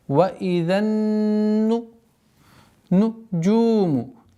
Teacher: С огласовки фатха уходим на удвоенный нун. Удержание в размере двух огласовок, назализации.